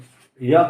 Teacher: य का उच्चारण स्थान तालव्य है